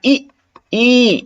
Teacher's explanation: एक सम्रत ये होता है मुख के खुलने के आधार पे सम्रत मतलब बहुत कम मुह खुलता है